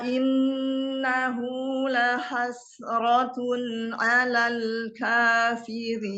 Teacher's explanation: Rnya tipiskan, lamnya juga ditipiskan.